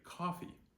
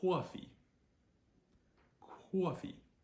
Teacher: o in certain words with a New Jersey accent develops a a w quality to it